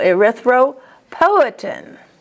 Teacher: And then poetin, the accent is on po, erythropoietin.